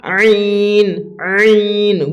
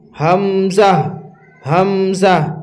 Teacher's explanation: হামজা এবং আইন এদের পার্থক্য হচ্ছে যে হামজা শক্ত ও পাতলা আওয়াজে বের হবে, হামজা হচ্ছে শক্ত ও পাতলা আওয়াজে, আর আইন হচ্ছে নরম ও পাতলা আওয়াজে। আইন নরম ও পাতলা আওয়াজে আর হামজা শক্ত ও পাতলা আওয়াজে